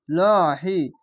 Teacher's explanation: ডান পাশের অক্ষরে যদি জাবার বা পেশ থাকে উপরে তাহলে লহি মোটা করে হবে